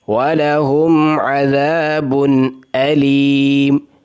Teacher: یہاں پر نون ساکن اور نون تنوین کا بھی اظہار ہو رہا ہے